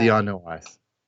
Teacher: It's not even a diphthong. That's three vowels.